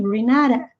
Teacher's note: o R é enrolado, o E é I, o T entre sons de vogais tem som de R.